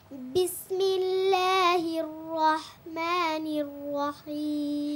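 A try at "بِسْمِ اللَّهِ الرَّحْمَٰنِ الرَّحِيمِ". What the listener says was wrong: হির রহ, ঠোঁট গোল হয়ে যায়, এটা খেয়াল রাখতে হবে, ঠোঁট যেন গোল না হয়।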